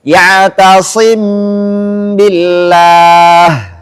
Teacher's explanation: mengucapkan mim sukun di antara sifat izhar dan idgham tanpa tasydid disertai dengan dengung ketika setelahnya ada huruf ba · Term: ikhfa syafawi